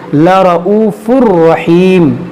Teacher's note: تنوین کے بعد را ہے، یہاں پر بھی ادغام ہوگا بغیر غنہ کے